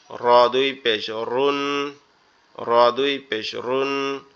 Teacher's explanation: আমাদের জিহ্বার আগার উল্টা পিঠ উপরে তালের সঙ্গে লাগবে